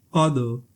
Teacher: क़ाफ, दाल, ज़बर, क़द। दाल भी हर्फ़ कलकला है, साकिन है, गूंजती हुई आवाज़ निकलेगी